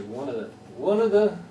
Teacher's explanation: one of the becomes like one word yeah it runs together because if you stress one then the other ones get compacted if you like it's called Legion the technical term but uh